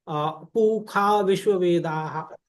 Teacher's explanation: जैसे हमारा वैदिक मंत्र है पू खा विश्व वेदाः, तो वहां लिखते तो मूर्धन्य श है, उच्चारण ख करते हैं